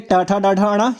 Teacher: टाठा डाढ़ा अड़ा ये मूर्धन्य ध्वनियां हैं, इनको मूर्धा से बोला जाता है